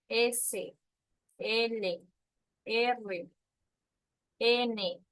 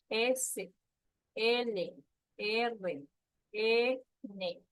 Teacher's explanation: La punta de la lengua se va a la zona alveolar. La zona alveolar es de sus dientes incisivos, lo que está en la parte de arriba.